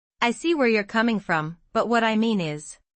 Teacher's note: In I see where you're coming from, stress coming to show empathy. In what I mean is, stress mean to emphasize the point.